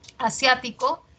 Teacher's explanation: Asiático es esdrújula, sia tiene la mayor fuerza de voz, es esdrújula.